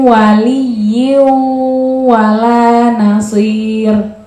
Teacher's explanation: Mi masuk ke wau dengan mendengung